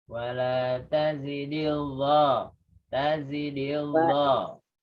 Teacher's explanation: Kalau di-nya masuk ke zat, lamnya hilang.